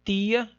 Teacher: O dialeto carioca vai produzir chiado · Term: pronúncia chiada